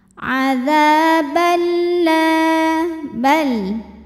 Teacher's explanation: Ada hukum idgham bila gunnah karena ada tanwin fathah menghadapi huruf lam. Cara bacanya tanwinnya dileburkan ke lam. Adzabal tidak disertai dengungan.